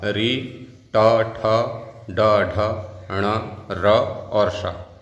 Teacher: री ट ठ ड ढ ण र और श, इनका मूर्धा उच्चारण स्थान हो जाएगा।